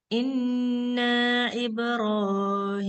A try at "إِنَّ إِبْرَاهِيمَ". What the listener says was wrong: Jangan panjang nanya. Inna Ibrahim.